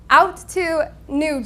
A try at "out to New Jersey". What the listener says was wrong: out and to, separate. You have to separate the words. You put them together is all. So it's not about speed. It's about the space between words. You must finish a word separate.